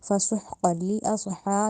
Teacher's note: فسحقا لی اصحا میں جو صاد آ رہا ہے اس کو موٹا کر کے ادا کرنا ہے، اس کو سین کی ادائیگی اصحا، سین سیدھی والا اصحا نہیں کہنا، اصح یعنی موٹا کرنا ہے، صاد کی ادائیگی دینی ہے، سین سے مکس نہیں کرنا۔